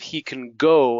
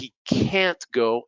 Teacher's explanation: I put a stress on the affirmative